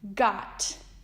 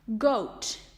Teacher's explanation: Short O's sound like ah, and long O's sound like oh.